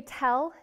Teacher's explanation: do you feel that puff of air that comes out when you say the t